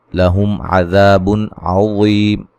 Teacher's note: میم ساکن کا اظہار ہے، غنہ نہیں کریں گے ، عذاب نرم ادا کریں گے، الف مدہ ہے، بن نون